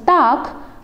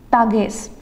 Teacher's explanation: So basically the G is devoicing to K